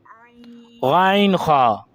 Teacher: حلق کے درمیان والے حصے سے غین خا